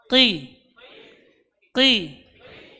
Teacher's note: huruf qaf ini huruf yang keluar dari pangkal lidah menempel pada langit-langit yang lunak.